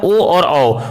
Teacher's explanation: ओ और औ का उच्चारण कंठ ओठ से होता है